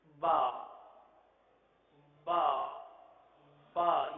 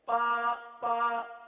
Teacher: اگر تر حصے سے کے بجائے خشک حصے سے ادا کریں گے تو با کے بجائے پا بن جائے گا. وہ حصہ جو باہر کی طرف ہے، یہ ہونٹ کا جو حصہ ہے یہ باہر کی طرف ہے.